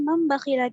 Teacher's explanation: تنوین یا نون ساکن کے بعد با آئے تو نون کو میم سے بدل کر غنہ اور اخفاء کے ساتھ پڑھیں گے. اس کو اقلاب کہتے ہیں.